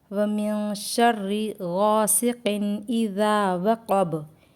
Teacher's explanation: वकब में बा पर स्टॉप होगा इसलिए बा साकिन होगा और कलकला करेंगे · یہاں وقب میں با پر سٹاپ ہوگا، اس لیے با ساکن ہوگا اور قلقلہ کریں گے